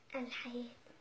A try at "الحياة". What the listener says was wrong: مططها شوية كلمة الحياة ترى